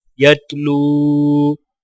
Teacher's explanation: واولین کو ایک الف کی مقدار کھینچ کر پڑھا جائے گا، اور وقف کرنے کی حالت میں بھی لام کو واو کے ساتھ ملاتے ہوئے ایک الف کے برابر کھینچ کر وقف کیا جائے گا.